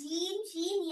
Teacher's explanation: জিম শিন ইয়া জিম জিম শিন ইয়া শিন জিহ্বার মধ্যখান হই হয় জিব্বার মধ্যখান তারপর উপরে তালুর সাথে লাগিয়ে